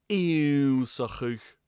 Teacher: there is no N sound, no English N here. We see two N's and we think there must be, but there's not.